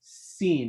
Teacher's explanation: makes sort of a whistling type sound, very light whistling sound, come out when you're pronouncing it.